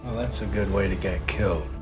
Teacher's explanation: the t becomes an american t in other words it transforms to a soft d sound